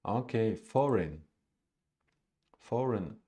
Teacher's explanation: it's a two-syllable word with stress on the first syllable